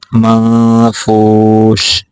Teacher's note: یہاں پہ غنہ پورا کرنا ہے